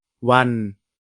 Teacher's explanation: La syllabe se termine par une consonne sonore, donc elle est vivante. Enfin, la consonne initiale est basse, donc le ton est plat.